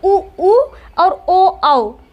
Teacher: तो देखिए उ और ओ औ ये 4 स्वर ही आपके वृत्ताकार होते हैं, क्योंकि उ के उच्चारण में भी होठ हमारे गोल हो जाते हैं और ओ औ के उच्चारण में भी होठ गोल हो जाते हैं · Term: वृत्ताकार स्वर